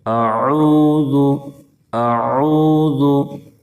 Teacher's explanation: اعوذ اعوذ، حمزہ اور عین میں فرق کرنا ہے، حمزہ اور عین میں واضح فرق ہونا چاہیے۔ اعوذ اعوذ، ذال کی ادائیگی میں زا کی طرح سیٹی جیسی آواز نہ نکلے، اعوذ نہیں پڑھیں گے۔